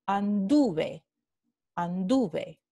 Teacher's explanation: La raíz es anduv y tenemos la vocal tónica, ¿sí? Que está en la raíz, no en la terminación y por esto se llama un pretérito fuerte.